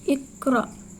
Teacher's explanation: Yang ke-10 yaitu iqra, disebut juga qalqalah sughra lantaran aksara qalqalah qaf berharokat sukun dan posisinya di tengah kalimat. Cara membacanya dipantulkan secara ringan.